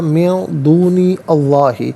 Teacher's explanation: من نون ساکن، اس کے بعد حرف اخفا دال آ رہا ہے تو نون ساکن کو اخفا کے ساتھ پڑھیں گے۔ اخفا کہتے ہیں ناک میں آواز لے جا کر گنگنانا۔